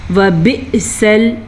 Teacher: حمزہ کے اوپر ساکن ہے تو ہم جھٹکے کے ساتھ پڑھیں گے